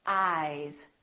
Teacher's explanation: these two words ice eyes listen to the difference ice eyes this s is actually pronounced as a Z sound this is actually this is voiced and this is voiceless therefore